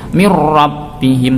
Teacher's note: Mirrabbihim seakan-akan ada tasydid. Jadi nunnya ini tidak dianggap, langsung masuk ke huruf ra tanpa ada dengungnya. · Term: idgham bila gunnah